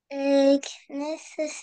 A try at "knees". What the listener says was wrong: Alors, le K, on ne le prononce pas. On dit juste knees.